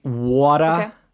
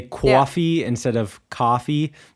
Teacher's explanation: So like water, the wa sound is very New York to me.